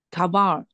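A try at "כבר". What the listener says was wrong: 你 跟 王 一 鸣 的 问 题 是 类 似 的 ， 就 是 读 成 了 卡 巴 尔 ， 卡 巴 尔 。 那 你 开 始 不 会 读 的 时 候 就 读 成 ▁kvar ▁啊 ， 然 后 慢 慢 的 来 ， 一 点 点 把 这 前 面 的 音 把 它 省 掉 。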